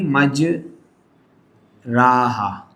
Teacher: امالہ کی وجہ سے جب زبر زیر کی طرف مائل یعنی جھکے تو اس کے بعد الف کا بھی یا کی طرف مائل ہو جاتا ہے